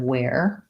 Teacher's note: So werewolf is actually like this kind of where, or this kind of where. So it has the air diphthong rather than the sound were.